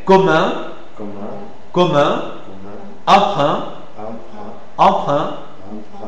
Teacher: une voyelle aussi antérieure mi ouverte arrondie. C'est l'arrondissement qui fait la différence entre eale par rapport à E1.